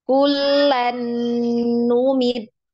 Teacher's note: apabila nun sukun atau tanwin bertemu dengan huruf nun, maka cara membacanya ini diidghamkan langsung ke huruf nun. Kemudian ditahan ya atau dipanjangkan dengan tempo 2 harokat ya atau lebih. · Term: gunnah mutawwala